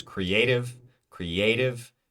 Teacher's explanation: the a is our stressed vowel sound